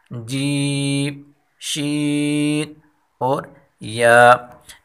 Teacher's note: ایک دفعہ پھر ان دونوں حرف کو ادا کرتے ہیں، حمزہ، ہا، یا، یا، یا، یا کی مخرج ہم پہلے پڑھ چکے ہیں، یعنی جیم، شین، جیم اور شین کی جو مخرج ہے وہی مخرج حرف یا کی ہے، یعنی زبان کا درمیان اور اس کے مقابل اوپر تالوں کے میلاب سے یہ تینوں حرف ادا ہوتے ہیں